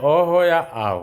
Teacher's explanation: अ हो या आ हो, दोनों का उच्चारण स्थान जो होगा कंठ होता है